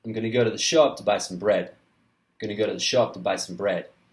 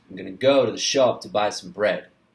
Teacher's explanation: I am emphasizing the content words, go, shop, buy, bread. And I'm reducing the function words.